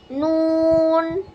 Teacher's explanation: জিহ্বার আগা তার বরাবর উপরের তালুর সঙ্গে লাগিয়ে